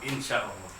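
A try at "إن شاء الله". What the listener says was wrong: Pendek Pak insya Allahnya. Insya Allah baru dia.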